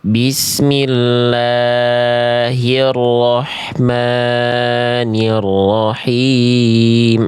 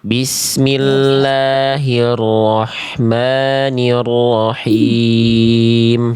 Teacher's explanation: Udah bagus Bunda, hati-hati tapi di bagian la ini basmalahnya dan ma ini cuman fathah tegak Bunda. Jadi cukup 2 harokat aja.